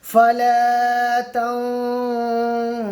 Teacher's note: তাহলে এই 15টি অক্ষরের মধ্যে একটি অক্ষর সিন এসছে, এই জন্য নুন সাকিনের আওয়াজকে নাকের মধ্যে নুকাইয়ে তো রেখে এক আলিফ পরিমাণ গুন্না সহ পড়তে হবে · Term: ইখফা